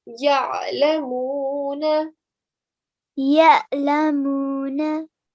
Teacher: with the ayn, you're giving the sound from the middle of your throat